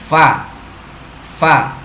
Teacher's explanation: Huruf fa keluar dari bibir bawah. Ya, bibir bawah yang bagian tengah, ya, bertemu dengan ujung gigi atas.